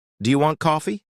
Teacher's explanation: when I ask a question, my voice often goes up at the end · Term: intonation